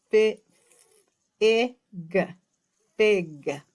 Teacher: the F sound is very quiet. Our teeth bite our lip.